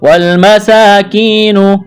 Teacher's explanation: والمساکین، میم زبر ما، سین کڑا زبر سا، مسا، میم کو جلدی پڑھنا ہے، سین کو ایک الف کے برابر کھینچنا ہے، کڑا زبر ہے، کاف کو باریک کرنا ہے، یا ساکن سے پہلے زیر ہے، یا مدہ ہے، ایک الف کے برابر کھینچنا ہے، نون کو جلدی پڑھیں گے۔